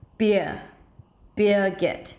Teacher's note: it sounds like the first syllable is the primary stress